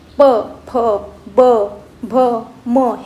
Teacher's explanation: ओठ म्हणजे खालच्या आणि वरच्या ओठांचा उपयोग करून आपण जे वर्ण उच्चारतो त्यांना ओष्ठ वर्ण असे म्हणतो